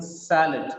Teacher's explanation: SA is stressed, that's why it gets the sound sa. When one sound is getting prominence, the second A becomes weak. That's why it becomes shwasa.